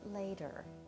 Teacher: the t is a flap and so we say it later with the D sound